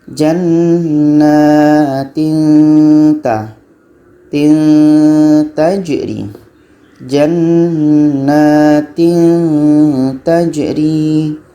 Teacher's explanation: Di antara bunyi tanwin dengan ta ni ada bunyi samar-samar.